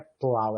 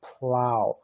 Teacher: É a história do desvozeamento, né? Então é uma lateral alveolar com início desvozeado